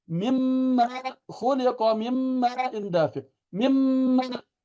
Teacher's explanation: Nun mati ketemu mim. Seakan-akan nunnya nggak ada. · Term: sempurna masuk